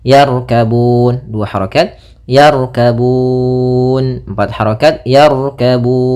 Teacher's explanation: pada lafal Bun di situ ada bacaan Mad Alif di sukun kita boleh memanjangkannya dua harakat empat harakat ataupun enam harakat